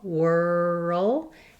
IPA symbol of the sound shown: ʊ